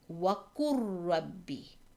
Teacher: So we would disregard the letter lam and we would pronounce the letter qaf with the dhamma with the letter ra. وَقُرْ رَبِّي, complete merging.